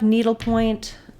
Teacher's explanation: In words like needlepoint, we want to have the stress on the first of the two nouns. So needle gets more stress and point gets some secondary stress.